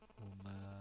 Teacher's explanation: ma dibaca panjang ma tabi'i